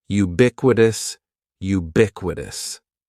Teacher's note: the stress is going to be on that second syllable